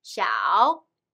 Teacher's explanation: begin the third tone down to your vocal register and from there bring it up to your normal speaking register